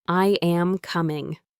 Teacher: Your voice goes down on coming. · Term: falling